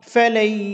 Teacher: নাকি নাকি উচ্চারণ করতে হবে ইয়ার উপর কিছুক্ষণ স্থির থেকে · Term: ইদগামে বাগুন্না